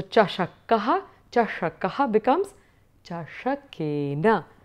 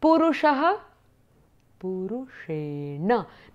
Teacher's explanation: With chashakena, you have a dental na. Whereas with the purushena, you have a na, which is a cerebral na, N sound, nasal sound.